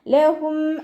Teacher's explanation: ഹ മഖ്റജ് വസത്തുൽ ഹൽക്കാണ്, സൗണ്ടിനെ വ്യക്തമാക്കി കൊടുക്കുക